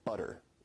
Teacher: Now notice where we write it with two T's in English that your tongue is producing a tap sound there rather than a full stop or plosive sound. So in North American English you say butter.